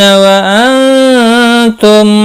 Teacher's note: نون ساکن کے بعد حروف اخفا کا تا آیا ہے، اخفا حقیقی ہوگا